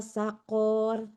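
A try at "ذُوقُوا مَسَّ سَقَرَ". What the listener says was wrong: Nggak panjang konya, saqor.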